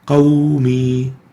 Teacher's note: the waw is a lean letter, not a mad, and because it has sukoon and it's preceded by a fatha, qawmi, not followed by a sukoon or a hamza.